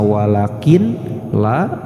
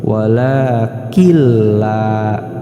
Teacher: dibaca idgham atau dibaca melebur disatupadukan yang asalnya walakin la maka Nun nya hilang langsung dibaca dimasukkan kepada huruf yang bertasydid